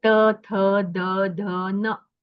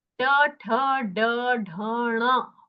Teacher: जो नकार का उच्चारण है वो दंत्य उच्चारण है त थ द ध न लेकिन जो ट ठ ड ढ ण वो मूर्धन्य उच्चारण है। मतलब अपनी जो जी्हा है वह अप लोअर पैेट मतलब दांत के थोड़े ऊपर वहां पर स्पर्श करती है तभी णकार का उच्चारण होता है।